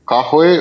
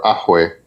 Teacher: a lot of people say they drop the ka and they have a hamza, which is a glottal stop. So it goes from a ka to just like a guttural sound, like absent sound before the word.